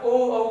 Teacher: ओ औ बोले तो कंठ पे भी जोर पड़ा, साथ ही साथ होठों पे भी जोर पड़ा, यानी कि ये कंठोष्ठ्य हो गए।